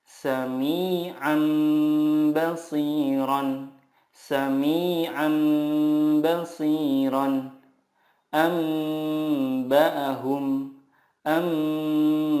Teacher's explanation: mengganti nun sukun dengan mim sukun dan disertai gunnah 2-3 harokat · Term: iqlab